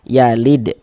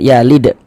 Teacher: Nah, jadi kalau huruf-huruf qalqalah itu kalau dalam keadaan sukun mantul. Ini huruf dal dalam keadaan sukun atau dalam keadaan mati dia mantul berarti yalid. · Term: qalqalah sugro